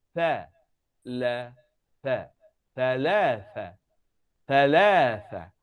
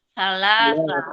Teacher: Hujung lidah sentuh gigi kapak atas.